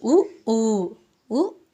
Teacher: ఉ ఊ లు వచ్చేసరికి సంవృతాలు ఉత్తర స్వరాలు